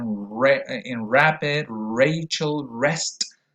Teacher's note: for the English R, what we use is this voiced postalveolar approximant, which is also called the voiced postalveolar retroflex.